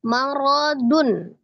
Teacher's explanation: ro-nya fathah dibaca tebal